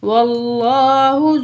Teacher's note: جب بھی زبر یا پیش ہوگا تو ہم ہیوی پڑھیں گے لفظ اللہ کو